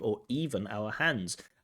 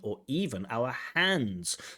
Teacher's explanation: So we get that adverb even but then even our hands and so the stress the adverb even and the stress of the pronunciation helps us to focus on that word hands